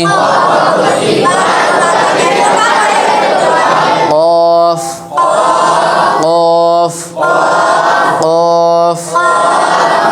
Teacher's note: কফ অক্ষর জিহ্বার গোড়া থেকে মোটা করে পড়তে হয়